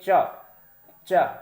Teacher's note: कहिए च, च, तो आप जब कहोगे च तो आपके जबान का ऊपरी हिस्सा, किनारे वाला हिस्सा तालु में जाकर के टच हो रहा है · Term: तालब वर्ण